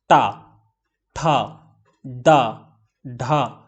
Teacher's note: तो आपको जीभ का जो आगे वाला पोर्शन है उसको आपको थोड़ा सा ऐसे ट्विस्ट करना पड़ रहा है, मोड़ना पड़ रहा है। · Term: मूर्धा